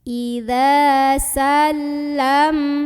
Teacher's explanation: cara membunyikannya huruf zal dipanjangkan 2 harokat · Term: mad tabi'i